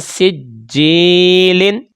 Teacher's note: یہ دیکھ لیں نون ساکن کے بعد سین حروف اخفا کا آ گیا. تو جب ہم اس کو ادا کریں گے تو نون ساکن پر غنہ ہو جائے گا اور لمبائی ایک الف کے برابر ہوگی